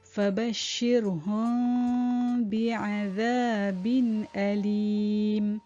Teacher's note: Jadi hum dan bi itu bila dia bertemu, dia perlu didengungkan dengan kadar 2 harakat. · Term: ikhfa syafawi